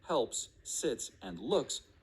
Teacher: in the words helps sits and looks your throat did not vibrate as you said the final two sounds